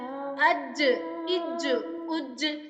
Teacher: جیم ہمارا حروف قلقلہ سے تعلق رکھتا ہے، اس کو ہم سختی سے جنبش دے کر پڑھیں گے۔ اگر جیم وقفن ہو، مطلب وقف کی صورت میں، ہم اس کو ایسے پڑھیں گے حمزہ جیم زبر اج، حمزہ جیم زیر اج، حمزہ جیم پیش اج، اج اج اج۔